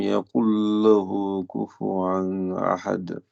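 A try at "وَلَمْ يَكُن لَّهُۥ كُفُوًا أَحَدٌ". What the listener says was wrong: T'as amélioré beaucoup le la fin, donc le qalqala.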